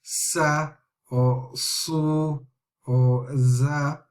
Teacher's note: a very small passage is created and therefore it's a small whistling sound